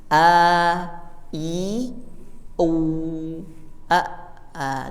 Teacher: Jadi membuka, meringis atau ke samping, kemudian mencucu atau ke depan. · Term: mad